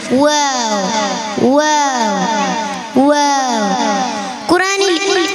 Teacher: 2 ചുണ്ടിൻ്റെയും ഇടയിലൂടെ വരുന്ന അക്ഷരം